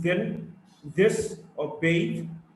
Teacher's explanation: voiced dental fricative. Th in then, this, or bathe.